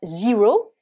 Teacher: on va prononcer le E avec le son I, puisque dans l'alphabet anglais, la lettre E, c'est le son I.